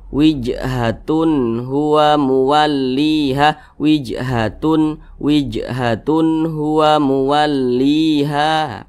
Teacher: dibaca jelas tidak berdengung Nah jadi dibaca jelas jangan dipanjangkan jangan ditahan suaranya jadi pendek saja wijhatun hua muwalliha wijhatun wijhatun hua muwalliha pendek saja seperti itu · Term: izhar halqi